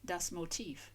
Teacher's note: it's spelled with a V on the end, yet sounded like an F, and with the stress on the second syllable